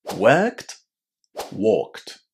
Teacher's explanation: Pay attention that work is one syllable and when we put it in the past worked is also only one syllable long.